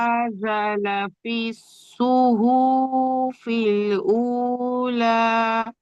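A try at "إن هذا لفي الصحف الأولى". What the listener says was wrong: হাটি খাড়া যাওয়ার একালিপ টান দিয়ে পড়লেন। জালটি আলিফ মাদ্দা যা, একালিপ টান দিয়ে পড়বেন। তারপরে সুহু, হার উপরে পেশ আছে, টান হবে না, এখানে টান দিয়ে ফেলেছেন, একটু খেয়াল করে পড়বেন বিনা টানে। ইন্না হাযা লাফিস সুহুফিল উলা।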